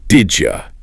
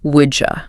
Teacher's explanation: The D is a hard stop. The Y in U is a glide. When they crash into each other at high speed, the friction creates a J sound. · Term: assimilation